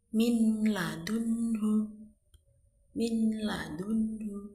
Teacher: nun sukun ketemu huruf lam itu tanpa dengung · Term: idgham bila ghunah